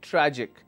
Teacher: the syllable stress will be on the second last syllable